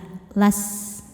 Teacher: sifat yang tidak punya lawan namanya shofir. Artinya ada desis seperti suara ular